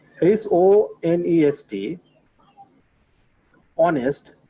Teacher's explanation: Here we can see the pronunciation of vowel O. H here is silent.